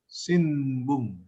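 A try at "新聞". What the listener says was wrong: not sinbung, tapi simbung, ya. Ini kan walaupun memang ini N, tapi N ketemu B, nanti kita belajar. N ketemu B, ketemu P, ketemu M itu sendiri, maka dia akan dibaca M.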